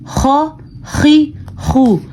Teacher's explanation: تھوڑا سا گلے میں خرخراہٹ پیدا ہوتی ہے